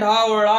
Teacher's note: फिर कितने, इसमें क्या होता है? जीभ मूर्धा को स्पर्श करती है और झटके के साथ नीचे आती है। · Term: हिंदी के स्वयं विकसित व्यंजन